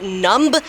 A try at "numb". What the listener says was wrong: I think you mean that it's numb. Numb. You don't need to say the B. The B is silent.